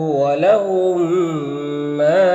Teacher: میم ساکن کے بعد میم ہے تو میم کو میم سے ملا کر غنہ کے ساتھ پڑھیں گے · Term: ادغام شفوی